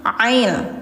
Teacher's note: Jadi jangan il tapi ail tenggorokan tengah ya